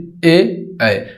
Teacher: कंठ और तालु से मिलाकर बोला जाता है ए उच्चारण करके देख लीजिए ए यानी की कंठ का प्रयोग